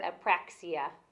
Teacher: Like the A, your mouth is open, but then you say the P and your lips are closed.